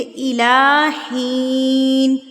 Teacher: ही को मैंने 1 हरकत के बराबर खींचा है